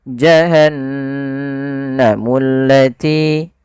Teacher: hijau dia menandakan di situ bacaannya adalah bacaan ghunnah ghunnah yaitu membunyikan suara hingga masuk ke rongga hidung kita maka suara nunnya dimasukkan ke rongga hidung